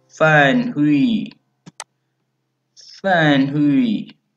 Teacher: Third tone we use going down then up because when we try it then it will go first down then slowly up.